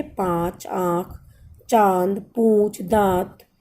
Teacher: ये स्वर मुख और नाक दोनों से बोले जाते हैं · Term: अनुनासिक स्वर